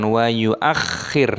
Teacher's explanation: khoknya berharokat tasydid maka ditekan